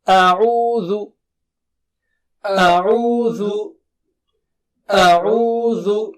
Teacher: اعوذ، صاف ہونا چاہیے. عو اور ذو بھی، زو نہیں بولیں گے ہم